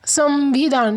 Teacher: संविधान, सम म की आवाज़ आती है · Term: अनुस्वर